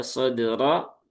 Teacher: roknya setelah dal itu ada rok fathah maka dia tebal lagi seperti nasroh ya sodro.